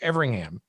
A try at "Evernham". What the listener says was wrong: There's no G. There's no G. Evernham.